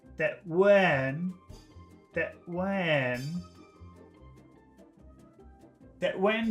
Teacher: we're putting a big o sound in the front so this is a very long vowel sound in front of the N